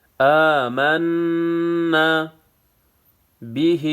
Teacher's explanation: نون مشدد ہے، یہاں پہ غنہ ہوگا. آمنا به به کڑی زیر ایک الف کے مقدار کھینچنا ہے.